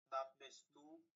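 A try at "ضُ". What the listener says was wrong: একটু মোটা করতে হবে, জের আর পেশটা তো তোয়ারটা মোটা করতে হবে, তো তো জিহ্বাটা একটু এদিক থেকে গোল হয়ে যায়, তো তো তো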